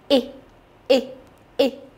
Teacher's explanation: với âm y ngắn này thì sẽ thấy có luồng khí đập vào tay